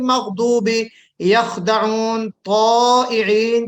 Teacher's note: मतलब ये है कि ये जो इस्तिअला की सिफत है ये वो हुरूफ हैं कि जिनको पढ़ते वक्त हमारी जुबान की जो जड़ है वो बुलंद हो जाती है तालू की तरफ, यानी जो जुबान की जो जड़ है यहाँ पे वो ऊपर चढ़ जाती है, तो ये हुरूफ अदा होते हैं।